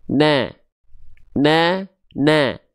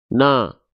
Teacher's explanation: huruf nun di sini dia termasuk ke dalam huruf yang dibaca dengan keadaan tipis karena dia bukan vokal seperti O, tapi dia vokalnya A ya. Oke. Maka tolong setiap ada vokal A pada huruf hijaiyah, tipiskan pelafalannya.